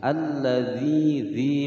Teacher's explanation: Hukum bacaan al-syamsiyah. Alladzi dzi panjang dua ketukan ada ya sukun sebelumnya kasrah